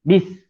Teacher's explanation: Bismillah, sin, bis, iaitu huruf hamas. Kita kena hamaskan dia. Hamas ni dia berangin.